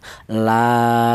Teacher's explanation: Jadi fungsinya alif ini sebagai mad thai itu berfungsi memanjangkan bacaan. Adapun panjangnya satu alif atau dua harakat atau dua ketukan · Adapun panjangnya 1 alif atau 2 harokat atau 2 ketukan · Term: mad thabi'i, matobi